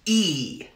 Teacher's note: this front High vowel is pronounced e